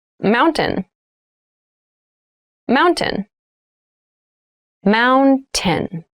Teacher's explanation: in fast speech it sounds like Mountain the T sound is reduced